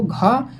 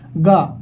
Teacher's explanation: लेकिन जब घा की बात करेंगे तो वो घा जो आपके महाप्राण में आएगा, जो अंदर से वायु लंबी वायु खींचेंगे निकालेंगे। घा पढ़ो, घा गा, गा तो बहुत जल्दी बोल देंगे मुंह में ही, मुख से, लेकिन जो घा बोलेंगे आप, आपके अंदर से बड़ी वायु, लंबी वायु की वायु, महाप्राण मतलब होता है, प्राण मतलब वायु होती है, ठीक ना।